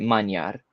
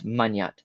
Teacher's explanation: You have very transparent loans, but you also have something called nasal spreading, where the nasality from another nasal or from H spreads over to a Y